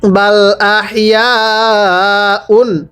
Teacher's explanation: ইয়া এর মধ্যে চার আলিফ টানতে হবে